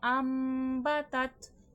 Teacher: نون ساکن یا تنوین جو بھی رول لگ رہا ہے اس کی آواز کو میم سے ریپلیس کر دینا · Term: اخلاق